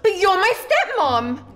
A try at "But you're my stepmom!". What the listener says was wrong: No, no, no! With emotion, you are an artiste! You're shocked!